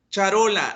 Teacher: Charola, la sílaba tónica es ro